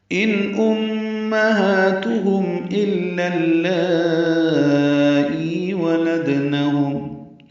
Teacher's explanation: ان امہاتہم الا اللائی ولدنہم، ان میں نون ساکن پہ اظہار، میم مشدد پہ غنہ، ہا کھڑا زبر دو حرکات لمبا کریں گے ، تا کو معروف طریقے سے یہ پیش ہے، ضمہ ہے،